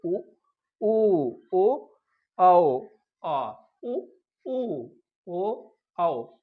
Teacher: मुंह का आकार जो है वो कुछ गोल गोल हो जाता है, इसलिए इसे वृत्तमुखी कहते हैं।